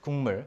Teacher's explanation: you will sound like 국물 with an ng sound in front of m. So 국물. So 국물 is what most people say. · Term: consonant assimilation